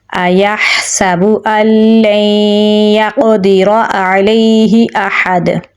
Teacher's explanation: क़ाफ को पुर यानी मोटा पढ़ेंगे। क़ाफ हरूफ क़लक़ला में से है तो इस पर हम क़लक़ला करेंगे · दाल पे कलकला हो रहा है · रा को पुर यानी मोटा पढ़ेंगे, आइन को गले के दरमियान वाले हिस्से से निकालेंगे, लैम को या के साथ मिलाएंगे, या हरूफ मद्दा में से है तो इसे हम एक अलिफ के बराबर लंबा पढ़ेंगे, हा को गले के निचले हिस्से से निकालेंगे